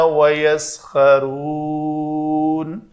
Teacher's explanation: نون کی زبر کو میں نے ساکن کر لیا، تو یہ واو مدہ محل مد اور ساکن حرف جو ہے سبب بن گیا، تو اس لیے میں نے اس کو لمبا کر لیا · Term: مد عارض وقفی